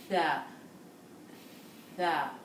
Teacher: The front of the tongue touches the upper front teeth.